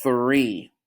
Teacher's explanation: that sounds like when we kind of say the number three we hear that th sound with your tongue at your teeth